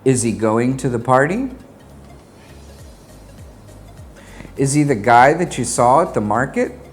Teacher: When pronouncing the helping verb is with the pronouns he, him, and her, we drop the H sound in these words. He will just be E, as in, is he going to the party?